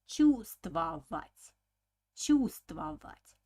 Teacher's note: The spelling of this word is чувствовать, чувствовать, but pronunciation will be like чувствовать, чувствовать. So the first V, the Russians don't pronounce. It's mute sound.